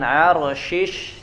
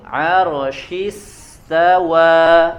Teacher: Arsyis ya, asnya, desisnya sudah masuk ke huruf sin. Arsyis, jadi jangan arsyish ya, jangan shish, tapi arsy langsung.